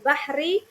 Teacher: Bahri dibaca tarqiq karena berharakat kasroh